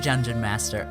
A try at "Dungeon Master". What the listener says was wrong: Sounded like you said Jungeon.